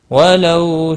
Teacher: واولین ہے، تھوڑا نرمی کے ساتھ کھینچ کر ادا کریں گے